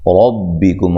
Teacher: کرنا، ربکم، را کو موٹا ادا کرنا ہے، کاف کو باریک، میم ساکنہ کا اظہار ہے تو میم ساکن کو ہلانا نہیں ہے